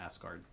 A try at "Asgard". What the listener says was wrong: Why are you saying it like that? It's Asgard. You're saying ass.